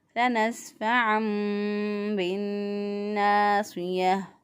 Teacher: گول تا جو ہے وہ وقف کی صورت میں ہاں میں بدل جائے گی